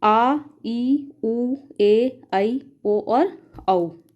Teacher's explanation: इनके उच्चारण में ह्रस्व स्वर की अपेक्षा दुगना समय लगता है, अर्थात 2 मात्रा का समय लगता है। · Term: दीर्घ स्वर